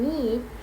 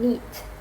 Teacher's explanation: the E sound in need is longer than in neat